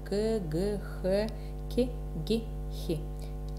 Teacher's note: Также появляются заднеязычные звуки, хотя они могут быть, если есть проблемы звукопроизношения, они могут появиться и позже. Заднеязычные звуки – это К, Г, Х, К, Г, Х